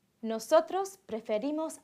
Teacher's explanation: the stress in the nosotros and vosotros forms does not fall on the last stem vowel, but on the ending